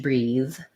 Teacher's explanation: this is a voiced th